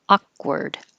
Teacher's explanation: And I don't say the k noise at all.